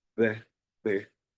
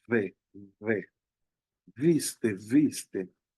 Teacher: Por ejemplo, cuando eh, la D labiodental, que ya por definición, para hacerla, en la primera simplemente juntamos los labios y sale B, B, y en la otra los dientes se pegan al labio inferior y decimos ve, ve, viste, viste.